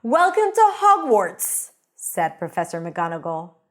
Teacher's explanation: I used a lower voice and I said it a little faster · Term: narrator voice